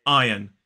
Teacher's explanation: iron but in a modern British RP accent this is iron two syllables stress falls on the first